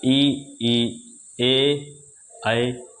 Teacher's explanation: ऐसा स्वर जिसके उच्चारण में जीभ का अगला भाग यानी आगे वाला हिस्सा काम करता है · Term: अग्र स्वर